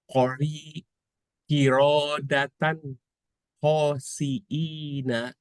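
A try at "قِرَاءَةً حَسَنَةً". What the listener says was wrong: Roknya nggak panjang. Ulangi lagi.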